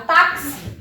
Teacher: Mas quando eu pronuncio a palavra táxi, o meu K, ele tem som, o meu X, ele tem som, perdão, de K, S